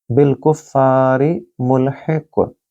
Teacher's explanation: बिलकुफ़ारी मुल्हिक़, कुफ़ारी फ़ा को आप देखिए कि आप उसके बाद अलिफ मद है, आप उसको लंबा करेंगे, और मुल्हिक़ आगे क्योंकि यहाँ रुकना है हमने, और उससे पहले कौफ आ रहा है, याद रखिए कौफ कुतुब जद यानी कि 5 जो कलकला के हरूफ हैं उसमें से एक हरफ है, लिहाजा मुल्हिक़ यानी कि उसकी गूंजती हुई आवाज़ आपको आएगी